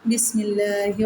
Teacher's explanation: لفظ اللہ کی لام سے پہلے زیر ہے تو لفظ اللہ کی لام کو ہم باریک پڑھیں گے